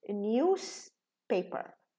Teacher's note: What we do, we reduce the voiced sound and we make it voiceless. That's why when news is just by itself, it's news, pronounced with a za.